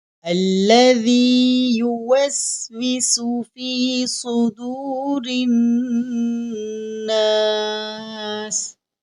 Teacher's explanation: ذال کو پڑھنے کا طریقہ یہ ہے، ہماری زبان کی نوک سامنے والے دانتوں سے تھوڑی سی باہر رہے گی تو ذال ادا ہوگا، اور یہاں صاد حروف مستعلیہ میں سے ہے تو صاد کو ہم موٹا پڑھیں گے، اور یہاں را کے نیچے زیر ہے تو را کو ہم باریک پڑھیں گے۔